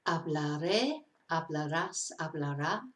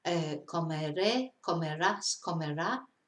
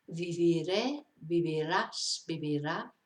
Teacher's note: So that makes it easier to conjugate, but it can be a little bit tricky to pronounce because where you stress changes because they've got accents. So quite often you're stressing on the last syllable when normally you would be stressing on the penultimate syllable